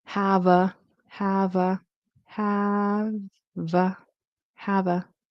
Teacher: Consonant V, and then the A is unstressed.